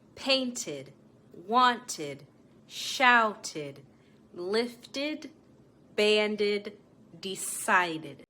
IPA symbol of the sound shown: ɪd